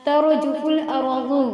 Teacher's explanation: دونوں میں را کو پر کر کے پڑھیں گے، موٹا پڑھیں گے